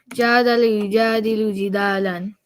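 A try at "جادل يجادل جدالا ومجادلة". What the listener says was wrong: That's it.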